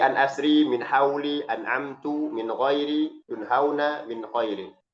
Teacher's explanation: Termasuk izhar. Pasti ke hidung. Nah, itu gunnahnya. Tapi gunnahnya tidak dipanjangkan, ya.